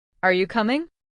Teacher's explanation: Did you notice how your voice goes up a little at the end? It shows that you are asking something.